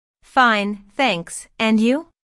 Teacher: notice the rising intonation on and you this shows that is interested in what Jane has to say